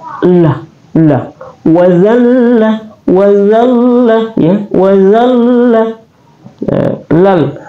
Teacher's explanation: Lam adalah hafatul lisan atau keluar di pinggir lidah kita. Dan dia juga bertasdik.